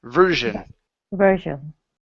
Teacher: we don't want to say jion. Okay, it's only zhen, one vowel sound.